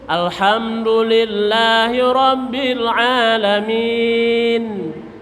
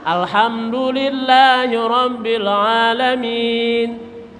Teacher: Min nun mati bibir dibuka jangan ditutup